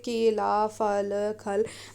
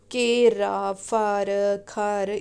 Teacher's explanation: वहीं पूर्वी हिंदी में ला के स्थान पर र का प्रयोग होता है